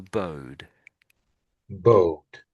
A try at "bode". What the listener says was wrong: so maybe the D is a little bit quiet when you're saying the D. It's not quite strong enough, I would say.